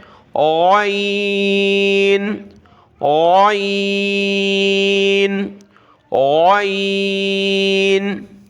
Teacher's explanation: اس کو موٹا کر کے گلے سے نکالنا ہے